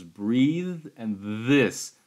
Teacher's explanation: so you hear some vibration in the vocal chords that's what makes uh sound voice where you hear that um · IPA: [ð]